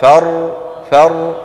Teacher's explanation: شايفين الراء فر فر، فيها جريان جزئي